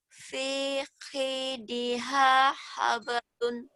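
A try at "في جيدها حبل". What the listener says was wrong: Bu, ini jim, Bu, bukan khi. Hablun, habel. Kalau dihentikan habel ya.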